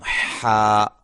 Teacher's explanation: ہا اس کو ہم حلق سے ادا کریں گے. حلق کا درمیانی حصہ یہ یہاں سے ادا ہوگا.